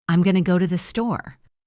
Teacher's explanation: The words going to transform into gonna. If you are reading a transcript, it says going to, but your ear needs to hear gonna.